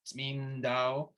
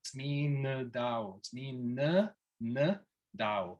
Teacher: putting these little, what I call the Georgian schwas in between certain consonants. Right with the first word, Tsmindao, a Georgian speaking this word might say it the way that you might be used to saying it, which is just kind of eliding the n to the d, Tsmindao.